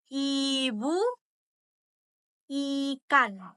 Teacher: sudut bibir direntangkan ke samping sehingga bentuknya melebar